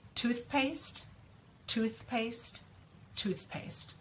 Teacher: my tongue comes out, but it comes right back in. So again, for practice, you may do it slow, but in real life, when you're actually talking and you get really good at this sound, it'll be really quick, so it won't feel as weird.